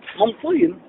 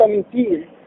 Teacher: ان لم نفخم حرف الطاء انقلب الى تاء